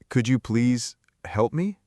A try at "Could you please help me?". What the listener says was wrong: Good effort, but try to say it a little more smoothly, without the pause in the middle. It should flow like one sentence. Could you please help me? All together.